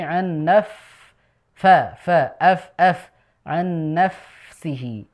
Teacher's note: untuk fa yang sukun ya maka dialirkan udaranya ya jadi jangan sampai terbatas